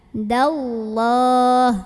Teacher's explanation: Dibaca panjang, dalnya 2 harokat. Hududallah lam jalalah dibaca tafkhim karena huruf sebelumnya berbaris fathah. Maka tebal pangkal lidah kita naikkan